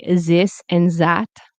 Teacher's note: If you're from France, you might say this and that like a Z, you know, like a Z.